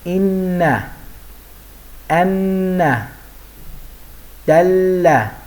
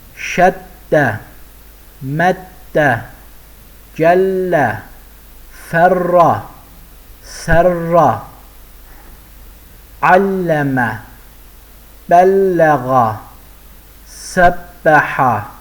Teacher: Şəddə hərfin üzərinə qoyulur, özündən əvvəlki hərfi özünə bağlayır və olduğu hərfi 2 dəfə oxudur.